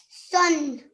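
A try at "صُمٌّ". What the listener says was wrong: Okay, it's a mim sound, darling, yeah? Sum.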